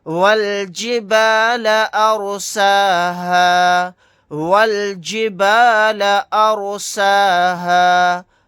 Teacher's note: رائے ساکنہ کو موٹا یعنی پر پڑھیں گے، واد کو موٹا یعنی پر پڑھیں گے.